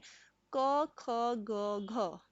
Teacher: घ का उच्चारण स्थान होगा हमारा कंठ है